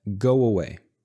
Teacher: We need to transition from O with rounded lips to a with my mouth wide open. So I keep my voice going the whole time. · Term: connecting vowel sounds